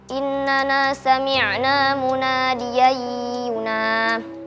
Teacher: Hukumnya idgham bi gunnah karena fathatain bertemu dengan huruf ya dibaca dengung